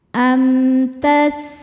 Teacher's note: Amtas, sinnya desis ya. Salah satu sifat huruf sin adalah sofir yang berarti berdesis seperti suara ular.